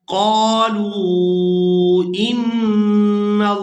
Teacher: यहाँ लफ्ज़ अल्लाह के लाम को पूरा अदा करेंगे क्योंकि लफ्ज़ अल्लाह के लाम से पहले वाले हरफ पर ज़बर है